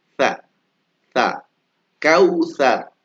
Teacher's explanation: Digigit ya. Ujung lidah bertemu dengan ujung gigi seri atas atau paling gampang apa? Digigit.